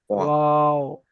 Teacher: তারপর দেখেন 14 নম্বর মাখরাজে দুই ঠোঁট না মিলিয়ে মাঝখান বরাবর হতে উচ্চারিত হয় ওয়াও। দুটো ঠোঁট মিলবে না, মাঝখানে এসে দাঁড়িয়ে যাবে ওয়াও।